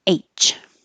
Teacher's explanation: if you're spelling and you have the letter H to spell make sure you're also using a good vowel a at the beginning because if you don't and it sounds more like e it'll sound like itch